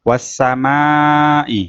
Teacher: Mimnya panjang 2 ayunan